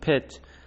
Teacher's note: I should mention though that both modern English and German usually aspirated p, t, k in word initial position. If you put your hand in front of your mouth when pronouncing a word like pit, you should feel a puff of air. That's aspiration.